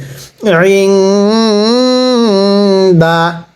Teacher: দাল জবর দা, ইং দা। আইনটা উচ্চারণের সময় গলার মধ্যে একটু চাপ দিয়ে পড়বেন আইনগুলো